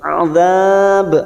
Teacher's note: mat arid li sukun 4 harakat kita panjangkan dan ujungnya kita pantulkan qalqalah kubra